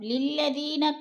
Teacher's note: للذین، ذی پہ یا مدہ ہے، یا مدہ کو ایک الف 2 حرکات کے برابر کھینچ کر پڑھنا ہے